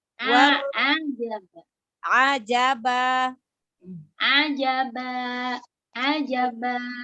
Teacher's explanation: keluar dari tengah tenggorokan ya